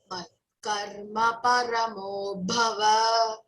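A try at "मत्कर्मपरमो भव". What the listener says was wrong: That bhava is short vowel, no? Vakara. So you should say Matkarma paramo bhava. Don't drag or elongate va. Bhava. Bha, Mahaprana again. Okay, you have to say, emphasize that one.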